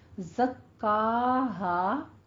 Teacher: الف مدہ ہے، 2 کاؤنٹ کریں